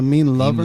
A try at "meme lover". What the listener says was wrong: I think you said a mean lover.